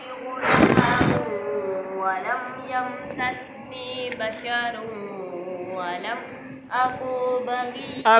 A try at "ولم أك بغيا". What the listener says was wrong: أكو کاف کو کھینچنا نہیں. أكو.